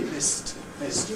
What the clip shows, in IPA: mɪst